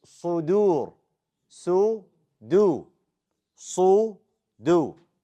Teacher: The dal is light. Don't make it heavy.